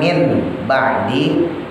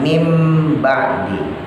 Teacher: Jadi nun matinya berubah jadi mim.